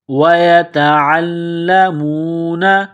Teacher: تا کو باریک کرنا ہے، عین کو لام کے ساتھ ملانا ہے، لام میں سختی کرنی ہے